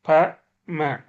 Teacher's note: இதழ் ஒன்றோடு ஒட்டி இயைந்து பிறக்கும் பகர மகாரம்